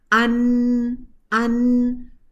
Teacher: जैसे देखिए नून का मखरज है ना, ज़ुबान की नोक ऊपर के दांतों के पीछे जो गम है वहाँ जाके टच होती है।